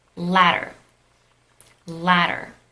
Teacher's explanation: You might not be able to tell the difference because in American English, the D and the T, they kind of change into these alveolar flap sounds. It's just that when you hear this alveolar flap, you perceive it as a D or a T sound when it's actually not.